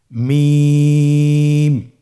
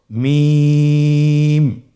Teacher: দুই ঠোট চেপে ধরে আমরা উচ্চারণ করব।